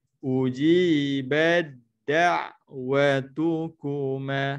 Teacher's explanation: So ta tidak dibaca. Jadi dimasukkan ta kepada huruf dal. Jadi tak baca ta. Terus bunyi dal.